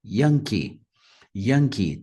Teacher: Yankee, primeira sílaba também é mais forte